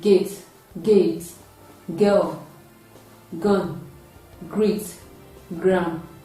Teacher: produces total obstruction of air unlike the curve which is light it is a voiced sound and it is also produced at the back of the tongue at the back of the mouth close to the velum and soft pallets it is a voiced velar glossy consonant sound